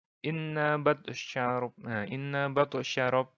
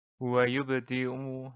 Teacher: qalqalah sugro ini kecil karena pantulannya tidak begitu diperlihatkan